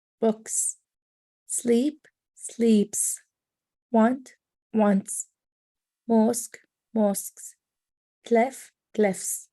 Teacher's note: the sound reps are slightly parted when you make this sound there will be small aspiration like a hissing sound